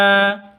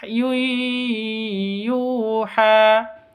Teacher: Yu mad asli panjang dua ketuk karena waw sukun sebelumnya dhammah.